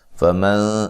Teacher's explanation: فمن نون ساکن کا اخفا ہے باریک